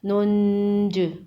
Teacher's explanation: نون نون پیش نن، جیم زیر جی، ننجی، وقف ننج۔ وقف کی صورت میں جیم پر قلقلہ ہوگا، جیم حروف قلقلہ میں سے ہے۔